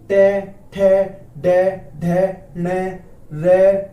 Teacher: मूर्धन्य वर्ण कौन से हैं, जब जीभ थोड़ी सी फोल्ड हो जाएगी, टंग क्या हो जाएगी, फोल्ड, जैसे कि टे, ठे, डे, ढे, ने, रे, है ना, और ये से।